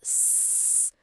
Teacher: Nada de vibração, né? Esse é desvozeado.